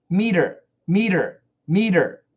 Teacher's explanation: m ET ER is a flap T